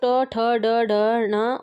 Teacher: ट वर्ग का उच्चारण जो है वो मूर्धा से किया जाता है